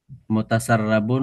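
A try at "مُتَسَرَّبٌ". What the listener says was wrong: Tapi rnya dibaca o ya. Jangan dibaca a.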